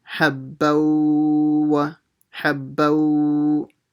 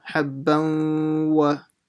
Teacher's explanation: the tanween letter, the ba, will merge with the waw. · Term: ghunnah